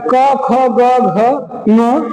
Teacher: जीभ का पिछला भाग कोमल तालु को स्पर्श करता है। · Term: कंठ